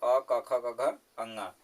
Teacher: अ क ख ग घ अंग और ह का भी इसी में कंठ में आता है